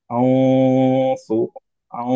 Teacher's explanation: back of the tongue elevated হবে, কারণ হচ্ছে যে সদ একটা হেভি লেটার